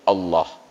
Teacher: padahal Allah itu dia harus tafkhim dibaca harus ada bunyi O nya